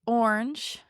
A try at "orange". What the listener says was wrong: Orange. That was crazy. That was crazy the way you said orange. Yeah, you just really emphasize. That was just crazy. Just orange.